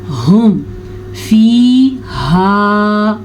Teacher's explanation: یہ والا جو ہا ہے یہ حلق کے آخری حصہ جو سینے سے ٹچ ہوتا ہے وہاں سے نکلتا ہے.